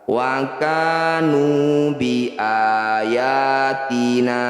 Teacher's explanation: Wa kanu fathah diikuti alif, ka disebut mad tabi'i, panjangkan 2 harokat. Nu dhammah diikuti waw sukun juga disebut mad tabi'i, panjangkan 2 harokat juga, jadi sama panjangnya dengan ka.